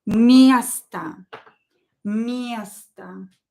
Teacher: But o is not stressed, so pronounce it as a. It will be reduced.